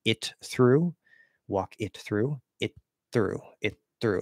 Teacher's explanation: if there's like a T before a TH, you can actually link them into the same spot.